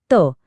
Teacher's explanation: दंत्य दातांना जीभ लावून येणारे